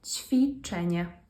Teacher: And notice that in this word, ćwiczenie, because the W comes after a consonant, in this case the ch, it actually becomes an F sound